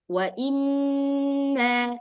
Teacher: nun tasydid dan mim tasydid ini di tingkatan paling atas atau maratibul a'la, tingkatan paling awal, nah dia lebih panjang sedikit